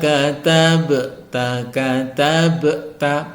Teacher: ba berharakat sukun disebut qolqalah Sugra dan harus dipantulkan